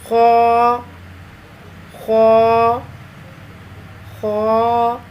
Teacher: زبان کی جڑ کو تالو کی طرف بلند کرتے ہوئے موٹی آواز میں اس کو ادا کریں۔